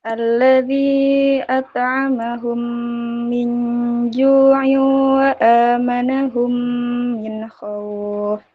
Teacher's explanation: Nun mati bertemu dengan jim, dibaca samar, hukum bacaan ikhfa halki. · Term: Ikhfa hakiki